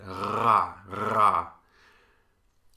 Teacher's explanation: This is your tongue, the back of your tongue, against your uvula, the little hangy-downy thing in the back of your throat. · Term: uvular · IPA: /ʀ/